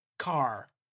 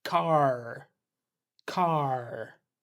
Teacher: If you say without a strong American R, it might sound a bit like car but with the but with the American R, it's car. That R is really present pulling the sound back.